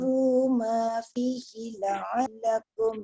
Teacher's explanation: Zal tu jangan bunyikan macam sin atau zai, dia tak boleh waz. Wazkuru. Hujung lidah keluar kan.